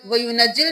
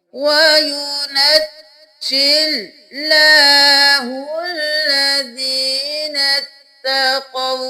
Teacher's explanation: وَيُنَجْ، اب وَيُنَجِّل نہیں کرنا، یہاں پر جیم پر تشدید ہے، 2 بار پڑھیں گے